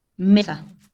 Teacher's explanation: está en la penúltima sílaba, mi acentuación